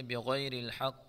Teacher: اس قاف میں ہم قلقلہ کریں گے